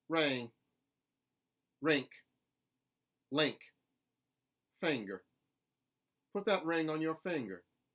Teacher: with an ing word raise the vowel in their mouths a little bit closer to an E sound